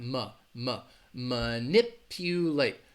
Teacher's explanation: about the word manipulate so this is a verb to manipulate it has four syllables and the first syllable is gonna have that schwa sound